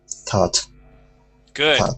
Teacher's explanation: we want to pronounce an ah sound here with the O-U-G-H